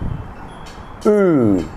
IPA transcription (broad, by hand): uː